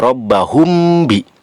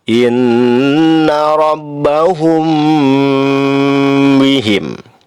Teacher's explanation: Mim mati bertemu dengan huruf ba. Ini termasuk ikhfa syafawi, lamanya 2 harokat disertai dengung.